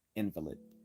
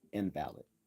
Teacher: when we accent the first syllable, we are speaking of a sick person